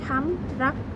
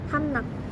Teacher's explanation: N juga merupakan bunyi yang berasal dari ujung lidah sehingga digunakan untuk menggantikan bunyi R yang asal bunyi itu paling dekat.